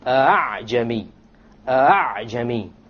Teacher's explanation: You don't pronounce it a full hamza, and you don't pronounce it as an alif, full alif. It is in between. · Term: tasheel of the hamza